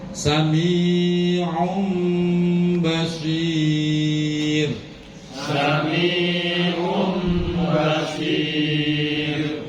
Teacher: Tanwin tanwin bertemu ba. Ba samiun menjadi samium. mingkem um karena mim itu mingkem mim dan ba itu satu makhraj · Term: iqlab